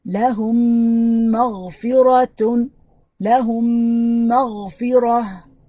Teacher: Notice that we stretch the meme that has a sukoon. Stretch to mean give it longer time.